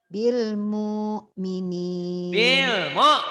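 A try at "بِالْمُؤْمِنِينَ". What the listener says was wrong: neken. Kurang neken hamzah matinya. Bil mu'minin.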